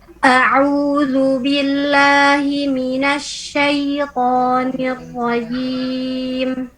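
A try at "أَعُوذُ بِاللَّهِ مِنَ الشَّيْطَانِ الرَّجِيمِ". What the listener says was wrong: Ahsanti, barakallah.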